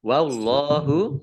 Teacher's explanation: Allahnya dibaca tebal karena harokat di depannya fathah. Lam fathah berdiri mat tobi'i.